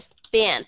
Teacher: pi nữa mà nó là âm S thì trường hợp này các bạn sẽ thấy âm p nó không còn cái aspiration nó sẽ trở thành là unaspirated